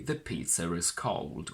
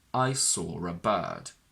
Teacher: we can say the pizza is cold with an intrusive r between pizza and is